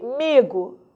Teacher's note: o i de amigo a nasalização está do m para o a mas o i não foi nasalizado